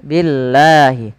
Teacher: maka lafal Allah bila sebelumnya huruf kasrah, maka dia tipis, jangan dibaca billah, jangan billah, tapi dia billah, billahi.